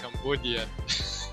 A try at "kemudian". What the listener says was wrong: Oh, well, Cambodian berarti you skip the. So for kemudian we have kemudian four syllables, right? Cambodia is like Cambo, so it's like Ian. But for Indonesian kemudian. So kemudian. If you say the ke, it will be very clear, like kemudian.